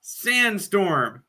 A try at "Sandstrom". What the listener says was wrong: You said Sandstorm.